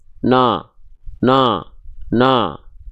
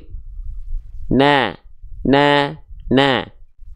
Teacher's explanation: Biasanya kalau kita melafalkan fathah dengan vokal a tadi disertai buka mulutnya dengan senyum vokal a-nya lebih tipis tapi bukan terlalu berlebihan senyumnya jadinya khawatir Jadi huruf e ne